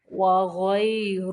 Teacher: را کو موٹا پڑھیں گے، را کے اوپر زبر ہے اس لیے